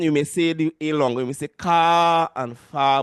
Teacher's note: We the A is being made. The sound is being made a bit longer because of the R